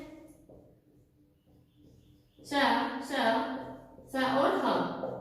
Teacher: हमारी जो वायु है वो रगड़ खाती हुई बाहर आती है, जिससे क्या होता है, ऊष्मा उत्पन्न होती है, तो वो हमारे कौन से व्यंजन कहलाते हैं, ऊष्म व्यंजन कहलाते हैं, ऊष्म व्यंजन कहलाते हैं।